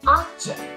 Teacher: Khi mà object là danh từ chúng ta nhấn vào âm tiết đầu tiên ạ.